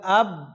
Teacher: اوپر والا ہونٹ نیچے والے ہونٹ کے تری والے حصے سے ملائیں گے تو با ادا ہوگا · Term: مخرج